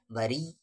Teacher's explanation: را کو یام ملائیں گے سختی کے ساتھ، ہارڈنس کے ساتھ